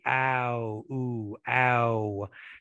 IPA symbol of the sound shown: aw